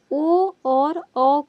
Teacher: दूसरा है आपका कंठ ओष्ठ स्वर, यानी कि कंठ और ओष्ठ दोनों मिलकर के ओ और औ का उच्चारण करते हैं